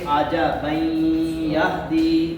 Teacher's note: یہاں ادغام ہوگا. یہ جو تنوین کا جو نون ہے نا اس کا اگلے حرف میں ادغام ہوگا اور غنہ کریں گے.